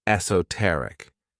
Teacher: This word has 4 syllables, and the stress is on that third syllable, esoteric.